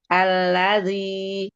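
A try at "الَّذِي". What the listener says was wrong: Ya, rata-rata aja, lidahnya datar aja. Alladzi. Turunin lagi. Alladzi. Jadi tempelin aja, jangan ditekan. Alladzi. Ratain lagi. Alladzi. Enggak, itu diangkat lagi, jangan. Alladzi. Iya, tipis aja, ditempelin aja, tipis aja ujung lidahnya fokusin. Jadi yang difokusin tuh ujung lidah aja yang bergerak di makhrajnya. zi.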